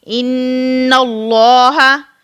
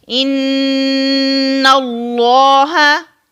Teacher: गुन्ना की आवाज जो है नाक के बांसे से अदा होती है